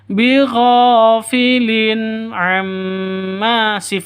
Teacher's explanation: Tanwin bertemu ain, jelas, tidak boleh disentak dan tidak boleh dilantunkan.